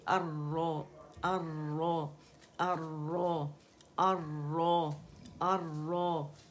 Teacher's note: مخرج پہ لام ساکن جو ہے اس کو آپ نے ظاہر کرنا ہے